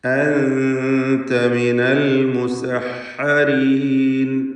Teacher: ശേഷം ഹംസ അടുത്ത പദത്തിൻ്റെ ആരംഭത്തിൽ വന്നതാണ് കാരണം. അൻത സാക്കിനത്തെ നൂനിനെ ഇഖ്ഫാ ഹഖീഖി നൽകി മറച്ച് മണിക്കണം